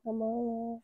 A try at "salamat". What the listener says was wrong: With a T on the end. Salamat.